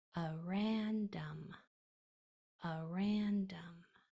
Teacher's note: with that second syllable accented